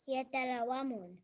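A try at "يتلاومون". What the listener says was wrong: No, you're not saying the alif. You're not saying it. Yata, ya, ta, la, wa, mu, n. Yatalawamun. You're not stretching. Lawamun. Yatalawamun.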